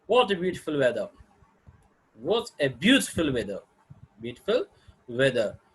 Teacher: intonation pattern describes how the voice rises at the end of the sentence. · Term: Rising intonation